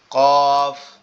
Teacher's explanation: জিহ্বার গোড়া তার বরাবর উপরে তালুর সঙ্গে লাগায় মধ্যখান পেঁচানো